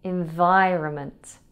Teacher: It has a silent N just after the O. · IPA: /ɪnˈvaɪrəmənt/